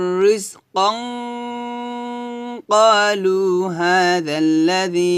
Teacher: রিজকান এভাবে গুণনা করতে হবে মোটা করে ইকফা গুণনা